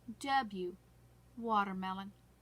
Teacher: it is just a lip rounding there is no air being blown out